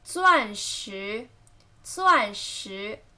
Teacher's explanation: 钻 first tone, 石 second tone.